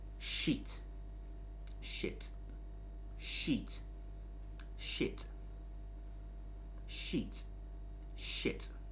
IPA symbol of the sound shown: i: